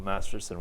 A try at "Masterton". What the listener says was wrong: Masterton first. T-O-N. Not S-O-N. Masterson.